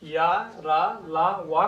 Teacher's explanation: सा, हा को या, रा, ला, वा को अंतस्थ व्यंजन इसलिए कहा जाता है कि इनका उच्चारण करते समय हमारी जिह्वा जो है वो मुख के किसी भाग को उतना स्पर्श नहीं करती है जितना और सब का उच्चारण करते समय करती है